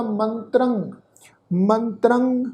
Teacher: पर तुसीं देखो तत्ते दे उपर टिप्पी की मात्रा वा, नासिक उच्चारण होएगा